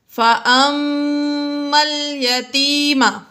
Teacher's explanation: فأما میں میم مشدد ہے اس لیے یہاں پر غنہ کیا۔ یاد رکھیے میم مشدد اور نون مشدد میں ہمیشہ غنہ ہوگا۔